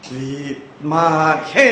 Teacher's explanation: വി യുടെ ചുവട്ടിൽ ഒരു വരയുണ്ട് അതിനെ അനുതാപ്പ് എന്ന് പറയും താഴ്ത്തി പറയും